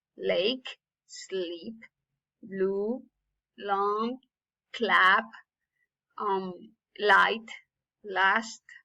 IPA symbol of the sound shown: l